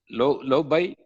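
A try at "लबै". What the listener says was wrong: No, what is the first letter? Then the sound la must come, not low. No, what is the first letter again? What is the second letter? Together now. Yeah, it is labai, not lobai.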